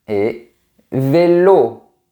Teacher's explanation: O comme dans les mots, et vélo. Le son est bien fermé. O. On a aussi le son plus ouvert.